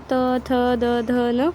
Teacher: अपना जुबान दांत पे स्पर्श होता है, तब त थ की आवाज़ आती है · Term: दंत्या